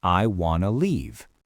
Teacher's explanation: we actually smash the two words together into a brand new two-syllable word, wanna.